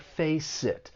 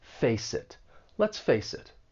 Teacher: The final consonant sound in face may get linked with the vowel sound in it. And it's going to sound like face it.